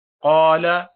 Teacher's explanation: قاف کو موٹا پڑھیں گے, حروف مستعلیہ میں سے ہے